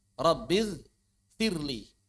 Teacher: Kenapa tidak diidgamkan ro bertemu dengan lam? Karena ro dianggap lebih kuat daripada lam.